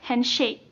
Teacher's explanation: Semua syllables yang berada dalam kata handshake itu ditekankan. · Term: spundi rhythm